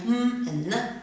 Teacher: m and n having air flowing through your nose